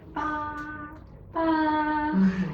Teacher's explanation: The first tone is a very flat sound and you don't need to move at all, and you can make the sound as long as you want, as long as you can hold your breath.